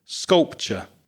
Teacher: that ur sound at the end is the famous schwah. The very weak sounding uh sculpture.